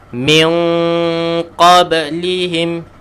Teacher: Tekan sikit kita punya pangkal lidah tu untuk jadikan makhraj huruf qaf yang tepat.